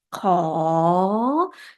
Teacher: So kho, originally the sound of high class consonant, it's already become rising tone by itself. So kho, can you hear the tone? It's rising, right?